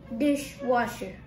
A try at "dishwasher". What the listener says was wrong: Correct.